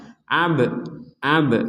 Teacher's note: Di sini ada ba sukun, kita bacanya dipantulkan. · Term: pentalan